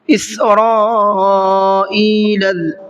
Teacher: اس سے پہلے یا کے اوپر کھڑا زبر ہے، اس کو بھی کھینچ کر کے پڑھنا ہے۔ اسرائیل، را یہاں پر بڑا مد ہے، اس کو مد متصل کہتے ہیں، اس کو 4 سے 5 الف کی برابر کھینچ کر کے پڑھا جاتا ہے۔